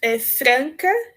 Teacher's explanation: a gente fala franca por conta do A estar próximo do N, que é uma consoante nasal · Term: vogais nasais